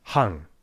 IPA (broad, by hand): haŋ